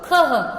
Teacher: जहां पर ये विसर्ग की मात्रा लगेगी हम उसके साथ उच्चारण करेंगे अह